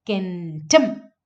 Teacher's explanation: So the stress is actually in kentum. Stress is on the second syllable.